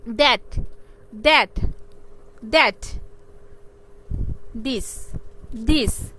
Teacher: টাং touches দা upper teeth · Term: ডেন্টাল